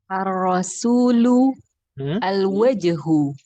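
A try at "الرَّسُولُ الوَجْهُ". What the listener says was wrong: Ahsant.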